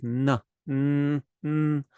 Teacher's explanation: Well, I would consider this the natural N, which is the N in the fourth position in the Ta Varga, where your tongue is on your teeth, at the bottom of your teeth.